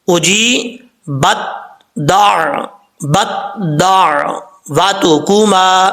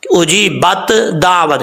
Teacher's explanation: یہ پہلے تا پڑھا جا رہا ہے پھر جو ہے دال کے ساتھ اس کو ملایا جا رہا ہے